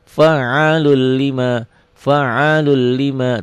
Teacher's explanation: Enggak ada dengungnya enggak ditahan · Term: idgham bila